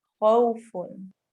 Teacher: वाव साकिन से पहले फतह आ गई तो यहाँ पे वाव लीन हो रही है